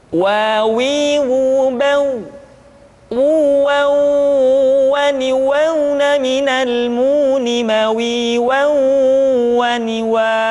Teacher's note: huruf wa diucapkan dengan cara memonyongkan dua bibir kita